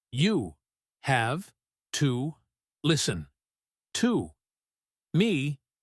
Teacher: each word is stressed separately, and the meaning is extremely serious